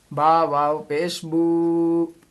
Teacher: واو ساکن سے پہلے پیش ہے تو اس کو کھینچ کے پڑھیں گے، واو مدہ ہو گیا۔